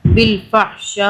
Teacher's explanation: یہ جب الف کے اوپر حمزہ آتا ہے تو اسے ہم جھٹکے سے پڑھتے ہیں، و یا، میم پیش منہ، را پیش رو، و یأمر، کاف میم پیش کم، وَيَأْمُرُكُمْ، میم پہ غنہ کریں گے 2 سیکنڈ کا، با لام زیر بل، فا زبر فح، بالفح، شین الف زبر شا، 6 الف کے برابر کھینچا